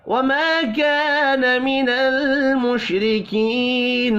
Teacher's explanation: تینوں کو ایک ایک الف کے برابر کھینچ کر پڑھنا ہے، را باریک پڑھی جائے گی زیر کی وجہ سے